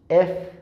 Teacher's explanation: উপরের দাঁত নিচের ঠোঁট, দুই ঠোঁট এক জায়গায় লাগবে না